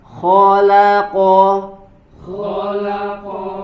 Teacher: huruf k dan huruf qof dibaca dengan tebal